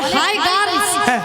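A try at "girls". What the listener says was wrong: গার্ল নয়, বলো গার্লস। একটা কথা উচ্চারণ করতে পারে, গার্লস গার্লস।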